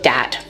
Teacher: using something like a D sound for where you see a written th so dat for that you can hear that oh this is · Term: th stopping, TH stopping